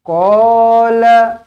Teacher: Qala, qa panjang, la pendek.